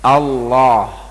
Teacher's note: Baik, mengucapkan Allah sesuaikan dengan harokatnya, kita ucapkan dengan fathah Allah, ketika menebalkan huruf, isti'la, tebal itu dikarenakan isti'la, karena diangkatnya pangkal lidah kita. Maka kita ucapkan Allah, tidak kita monyongkan mulut kita, tidak, karena yang kita baca dengan harokat fathah.